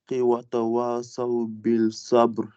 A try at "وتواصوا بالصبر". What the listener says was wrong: Alors, tu prononces un petit L ici, bil sabr. C'est bien ce que j'ai entendu deux fois. Donc, en fait, il n'y a pas de L, il n'y a pas de sod.